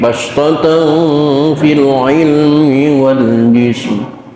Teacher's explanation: Bastatan ada tanwin ketemu huruf fa, hukumnya ikhfa ausat, suara m